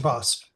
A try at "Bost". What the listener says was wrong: It is not boast. It is not boast.